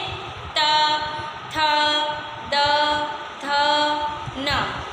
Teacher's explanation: हमारी जीवा दांतों को स्पर्श करती है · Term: दंत्य वर्ण